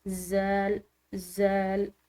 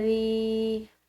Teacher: من ذی، یہاں پر ذال ہے، ٹھیک ہے، یہ نرم حروف میں سے ہے، یعنی کہ ذال کو ادا کرتے ہوئے سیٹی جیسی آواز بالکل نہ ہو، یعنی کہ اس میں سختی و شدت نہ ہو، اس کو ذال، ذال اس طرح نہیں پڑھ سکتے، بلکہ اس کو پڑھیں نرم، ذی، ٹھیک ہے۔